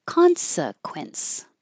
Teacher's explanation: Consequence, just three syllables. The first one is stress, primary stress, so it's higher and longer.